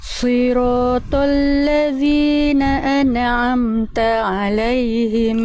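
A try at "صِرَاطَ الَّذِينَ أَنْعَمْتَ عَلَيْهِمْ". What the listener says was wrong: Oke, tinggal di nun sukun, jangan ane, tapi an'amta. Karena nun sukun tidak punya sifat qalqalah, maka jangan dipantulkan. Siratal ladzina an'amta alaihim.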